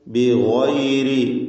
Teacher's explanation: ഈ പദത്തിൽ ഗൈന് തഫ്ഖീം ചെയ്യണം, തടിപ്പിച്ച് സ്വരഭാരത്തോടെ ഉച്ചരിക്കുക.